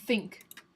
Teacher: The first example is like think, where it's the th, and there's no voicing.